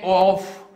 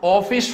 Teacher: इसमें पूरा मुंह आपका नहीं खुलना चाहिए, गोल मुंह होना चाहिए, मतलब मुंह पूरा नहीं खुला है फिर भी आधा खुला है